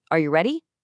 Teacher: The pitch floats up at the end. · Notice how we naturally use a rising intonation for yes or no questions.